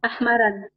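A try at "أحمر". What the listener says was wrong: Ahmara, non, ahmara. Ahmara. Ahmara, pourquoi? Parce qu'il est mamnou min as-sarf. Et on avait vu mamnou min as-sarf, ça veut dire interdit de conjugaison ou interdit de tanwin.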